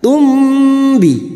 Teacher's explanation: Biasanya mim sukun dibaca jelas tanpa mendengung, namun kali ini mim sukun bertemu ba, maka mim sukun dibaca mendengung selama 3 harokat. Tumbi. Namanya bacaan ikhfa syafawi, artinya samar di bibir.